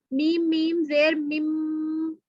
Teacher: اگر ہم میم پر غنہ کر رہے ہیں تو دیکھیں میم میم زیر میم، تو ہمارے دونوں ہونٹ جو ہیں وہ آپس میں ملتے اور تھوڑی سی وائبریشن جو ہے وہ ناک میں فیل ہوتی